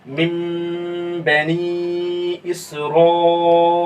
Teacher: इसी तरह मिन बनी इसराईल, अब देखिए नून साकिन के बाद क्या आ रहा है, बा आ रहा है, तो नून की आवाज किस में बदल गया, मीम में बदल गया, देखिए छोटा सा मीम ऊपर में है, मिन बनी इसराईल। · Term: इक़लाब